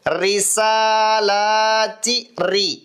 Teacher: வழக்கமா ஓதக்கூடிய அந்த ர் விட கொஞ்சம் மெதுவாக மிருதுவாக மென்மையாக உச்சரிக்க வேண்டும் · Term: மெல்லினம்